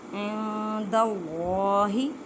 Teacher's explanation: اللہ کے لفظ سے پہلے زبر ہے تو اللہ کے لفظ کی لام کو پر پڑھیں، موٹا پڑھیں گے